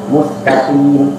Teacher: Juga ketika sin yaitu terdapat sifat qaf, tapi di situ juga harus diperhatikan mustaqim. Namun isti'la'nya qaf ketika dia maksur, ketika dia dibaca kasrah, derajat isti'la'nya agak rendah sedikit, yaitu boleh tidak yaitu tidak harus terlalu jelas isti'la'nya. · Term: huruf isti'la